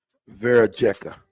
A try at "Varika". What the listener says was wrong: The J is silent.